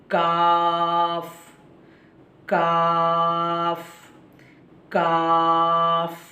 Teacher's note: زبان کی جڑ نہیں، تھوڑا سا آگے کا حصہ اوپر کے تالو سے لگا دیں گے تو کاف ادا ہوگا